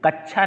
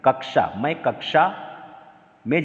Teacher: इसका उच्चारण लास्ट में श का, मूर्धन्य श का उच्चारण आना चाहिए